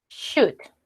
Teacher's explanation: la L no se pronuncia. Termina en D.